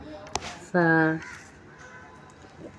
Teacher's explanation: ज़बान की नोक को ऊपर के अगले दो दांतों के किनारे इस तरीके से लगाना कि सामने बैठे शख्स को हमारी थोड़ी सी ज़बान दिखाई दे